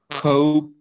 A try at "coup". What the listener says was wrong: The P is not pronounced. Coup. Coup. Yes, the P is not pronounced.